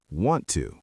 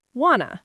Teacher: Americans love deleting t sounds. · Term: sound dropping